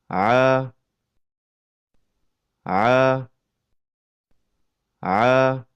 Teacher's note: Huruf ain keluar dari tengah tenggorokan. Tatkala melafazkan huruf ain, epiglotis merapat ke dinding tenggorokan sehingga mempersempit keluarnya huruf.